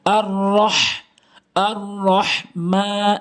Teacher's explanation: ছোট হা এটি হচ্ছে বড় হা, যেটি হলকের মাঝখান থেকে